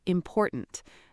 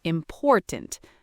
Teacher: The stress is on the second syllable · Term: word stress